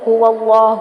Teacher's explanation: ہا کی پیش کو لمبا نہیں کریں گے